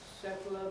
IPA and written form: ˈsetl̩ə (settler)